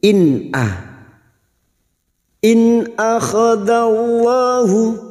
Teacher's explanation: nun sukun dibaca jelas tanpa mendengung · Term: izhar halq